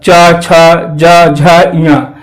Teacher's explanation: हमारे जो जीभ का अगला भाग है वो जाके हमारे तालु से ऊपर जाके टकराता है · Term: तालव्य